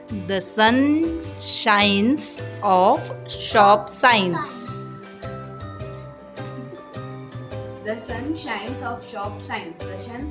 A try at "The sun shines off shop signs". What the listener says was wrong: सन को शन बोल दिया. लास्ट टाइम भी एस वर्ड की प्रॉब्लम आई थी. शी सी.